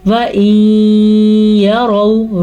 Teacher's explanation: را کو پر پڑھنا ہے کیونکہ را پہ زبر آ گئی